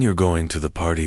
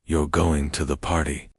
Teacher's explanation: saying you're going to the party with a falling tone is a statement, but saying the exact same words, you're going to the party, with a rising tone, turns it into a question.